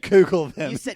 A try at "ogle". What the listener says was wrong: You said Google them. And you translated it from oogle, and it's actually ogle.